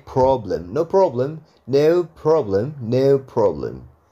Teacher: kalau britishnya cukup dibaca O oke o aja